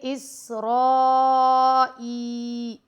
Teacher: یہ آپ 3 سے 4 الف تک اس مد کو لمبا کر کے پڑھیں گے